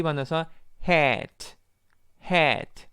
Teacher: 애 발음에서 입을 크게 벌리면서 혀의 위치가 아래로 다운되는 그런 구조로 발음을 낼 수 있어요. 그래서에 아마 제가 보여 줄 수 있으면 좋겠지만 거울을 보고 혀를 밑추면서 입을 크게 벌려서에에 이렇게 발음하면 좋습니다. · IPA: [æ]